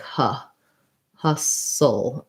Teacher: it has a schwa sound rather than an ah, like in hostile. It sounds like huh.